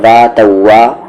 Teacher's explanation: وی sound نہیں لائیں گے، جو انگلش میں وی لیٹر ہوتا ہے وہ ساؤنڈ نہیں آنا چاہیے. تو ڈبلو ساؤنڈ لائیں گے.